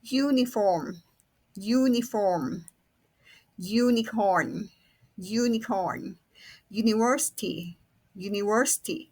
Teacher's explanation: ครูออกเสียงเป็นยยยครูไม่ได้ออกเสียงอะอะอะ